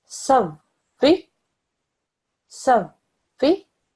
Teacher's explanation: notice how I pressed down on the waw, I didn't rush through it